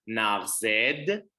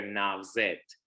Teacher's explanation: Narzed with a D or a T, depending on the if it's literary or if it's colloquial. The D's, sometimes when they come at the end of words, they tend to be turned into T's. So you might hear narzed or you might hear narzet, depending on the formalities.